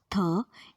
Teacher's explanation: आप लोग डायग्राम में देखिए कि थ को प्रोड्यूस करते समय tip and blade of tongue touch कर रहे हैं अपर फ्रंट टीथ को एंड वोकल कॉर्ड्स हैं वाइड अपार्ट, है थ इज डेंटल वॉइसलेस फ्रिकेटिव